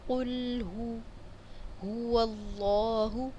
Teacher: پھر بتاتی چلوں، قاف کو پڑھتے ہوئے موٹا پڑھتے ہوئے ساتھ میں پیش پر ہونٹوں کو گول کرتے ہوئے اس کی ادائیگی کرنی ہے۔ لام کی آواز کو ہلانا نہیں ہے، حرکت نہیں دینی